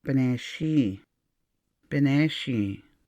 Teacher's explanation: The NH makes the double I, E sound, strongly nasal.